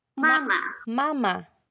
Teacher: yung unang Ma may tono siya ma tapos yung pangalawa Ma wala na